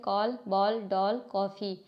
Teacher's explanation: इसका उच्चारण आ ओ और औ के बीच का है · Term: आगत ध्वनियां